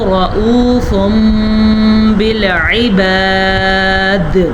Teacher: دال پہ قلقلہ ہوگا کیونکہ دال وقف کی وجہ سے جھٹکے کے ساتھ پڑھی جائے گی